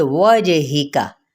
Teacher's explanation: جیم پہ قلقلہ، ہا کی زیر کو بھی لمبا نہیں کریں گے اور نہ ہی کاف کی حرکت کو زبر کو۔